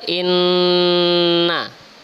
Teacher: Ada nun bertasydid maka dibaca berdengung